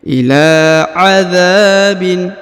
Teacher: Huruf la dibaca 2 harokat ya, karena di depannya terdapat alif kecil.